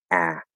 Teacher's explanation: a is in the front of the mouth. It's very open. Of course, we have the lazier way that we can do it, but the full proper sound is very open.